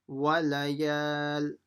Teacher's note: Just making sure you stretch the ya because of the alif